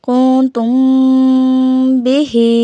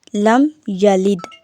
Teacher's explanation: میم ساکن کے بعد حرف با آ جائے تو میم ساکن میں اخفاء شفوی ہوگا، یعنی غنہ کریں گے۔ مثال کے طور پر کنتم بہ، اب ادھر غنہ ہے تو میم کو غنہ یعنی ناک میں 2 سے 3 ساکن آپ ناک میں آواز لے کے جائیں گے، ٹھیک ہے۔